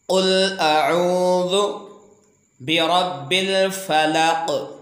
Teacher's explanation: ये अलिफ यहाँ पे अदायगी के दौरान नहीं पढ़ा जाएगा और ये क़ाफ़ के नीचे ज़ेर को ख़त्म करके ये क़ाफ़ को कलकला के साथ वक्फ़ किया जाएगा। क्योंकि क़ाफ़ हुरूफ़ कलकला का हिस्सा है तो इसको जुम्बश के साथ वाज़ेह अंदाज में इसको अदा कर कर वक्फ़ करेंगे।